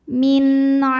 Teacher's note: sebab nun sukun menghadapi huruf Ain maka Nun dibaca jelas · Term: zharqi